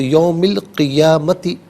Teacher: نہیں، قبل یومی القیامتی، یومی میں میم کے نیچے زیر ہے، اسے القیامتی کے لام ساکن کے ساتھ ملائیں گے، درمیان میں سے الف یعنی حمزہ کو حذف کیا جائے گا